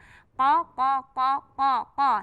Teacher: Kalau Qaf kemarin yang sebelumnya, pelajaran kita sebelumnya, Qaf itu dari pangkal. Dia bulat, kemudian dia mantul kalau berhenti.